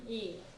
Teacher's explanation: it tends to be a little bit of a falling tone on the E